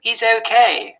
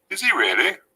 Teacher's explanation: The weak function words he, him, his, her, have, had, and has all tend to lose the H if the word doesn't appear at the beginning. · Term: weak H